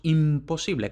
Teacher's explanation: Igual que no decimos imposible, sino que decimos imposible con M bilabial porque la P es bilabial